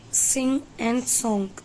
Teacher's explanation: It is voiced velar nasal sound.